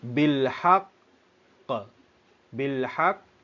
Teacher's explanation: ditekan dan ditahan sekadar dua harakat kemudian lepaskan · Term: Qalqalah